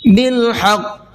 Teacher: حا کو حلق سے نکالنا ہے اور قاف کو پر کر کے بھی پڑھنا ہے اور تھوڑا سا آواز کو ڈبل کرنا ہے کیونکہ قاف کے اوپر تشدید ہے۔